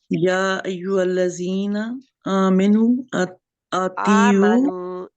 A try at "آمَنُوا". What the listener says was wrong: آمنو، آمینو نہیں ہے، میم کے نیچے زیر نہیں ہے. آمنو، آمنو،